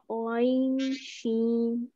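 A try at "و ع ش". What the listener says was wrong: آپ نے مقدار اس کی بھی صحیح نہیں، سب چاروں حرف کی پانچوں حرف کی ایک مقدار کر دیے، واو وا عین شین، ٹھیک ہے اس طرح سے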